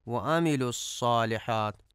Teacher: یہاں پہ عین کو درست ادا نہیں کیا جاتا اور حمزہ پڑھا جاتا ہے